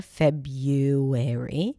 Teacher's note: the American pronunciation which is without the original R